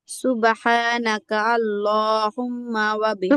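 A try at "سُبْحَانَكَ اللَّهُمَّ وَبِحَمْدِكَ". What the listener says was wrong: সুবহানাকাল, কাফলাম জবর কাল হয় না?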